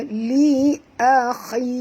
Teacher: Dan kita berhenti di sini dengan kha ni, jaga makhrajnya walaupun di baris bawah tetap tebal kerana kha adalah huruf isti'la